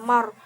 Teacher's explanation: ro-nya itu ro tafhim karena ro sukun didahului dengan harokat fathah